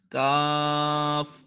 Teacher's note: یعنی زبان کی جڑ اور تالو کے سخت حصے سے ادا ہوگا، اس کو کیاف نہیں پڑھنا، اس کو پڑھنا ہے کاف، موٹا نہیں کرنا، حروف مستعلیہ میں سے نہیں ہے، کاف۔